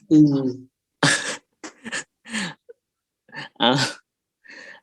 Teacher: Close, right? But not as close as the primary cardinal vowel number 8. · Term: long u